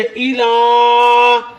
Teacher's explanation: لا پر کھڑی ہے، اس کو ایک الف کے برابر لمبا کریں